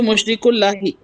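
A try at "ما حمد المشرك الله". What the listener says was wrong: मुशरिकू के ऊपर पेश क्यों पढ़ रहे हैं? अल्लाह के ऊपर, हा के ऊपर जबर क्यों पढ़ रहे हैं?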